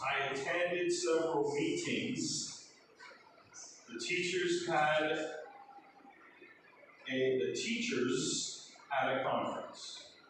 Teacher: Some Khmer learners of English have problems making the final Z sound. This is a voice sound, so your vocal cords must vibrate.